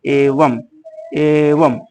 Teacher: अंतिम अनुस्वार का उच्चारण म के समान होता है